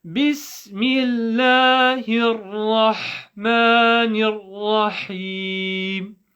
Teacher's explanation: So when you're praying The word Rahim, again, it's the same principle. The Ra with a Fatha, full mouth. Ha from the middle of the throat.